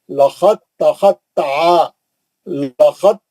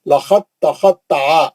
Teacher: अब ये दाल नहीं पढ़ेंगे, साकिन हर्फ हमेशा गायब हो जाएगा, निकाल देंगे, इदगाम हो जाएगा साकिन हर्फ का। लखत दाल पे जज्म था, अब दाल नहीं पढ़ेंगे, ता में चले जाएंगे सीधा, लखत तखत ता।